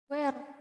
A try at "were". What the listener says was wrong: Were ya, were, bukan where ya, cara bacanya ya. Were. Bukan. Yang salah bukan jawaban kamu. Yang salah cara baca kamu. Jadi bukan dibaca where, tapi dibaca were. Were ya. Were ya. Karena kalau where itu artinya beda. Where itu artinya di mana ya, yang ada huruf H-nya.